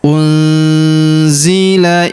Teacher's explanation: Kemudian huruf nun sukun bertemu huruf zi. Maka nun sukunnya melebur ke huruf zi. Kita baca dengung dan samar. Dengungnya kita tahan dua sampai tiga harakat ya.